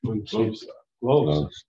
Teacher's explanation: The circumflex accent shows that the voice rose and then dropped a little on the accented syllable.